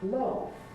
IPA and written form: lɑːf (laugh)